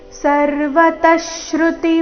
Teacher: ವಿಸರ್ಗದ ಅರ್ಧಶ ಮುಂದಿನ ಶಬ್ದದ ಶ್ರುತಿ ಒಟ್ಟಿಗೆ